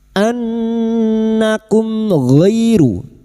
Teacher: Izhar syafawi. Mim sukun dibaca jelas tanpa mendengung.